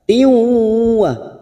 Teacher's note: Siap masuk pada huruf waw, kita tekan selama 3 harokat. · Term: idgham bi gunnah